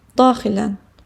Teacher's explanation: Daxilən vurğu ilk hecadadır. Ən şəkilçisi qəbul edəndə sözün vurğusu sözün öz hecasından da bir heca əvvələ gəlir.